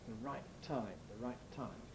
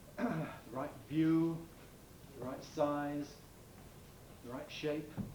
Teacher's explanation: the phoneme t is sometimes realized sometimes pronounced as a glottal rather than as an alveolar